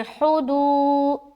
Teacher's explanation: واو پیش دو، یہاں پر واو مدہ کر رہے ہیں تو واو ساکن سے پہلے پیش ہے، ایک الف کھینچیں گے